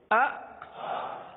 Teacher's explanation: یہ جھٹکا ہے, یعنی آپ ایک دم سے آواز کو روک لیں